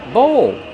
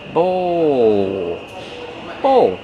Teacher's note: Use the long O like no and go plus the dark L.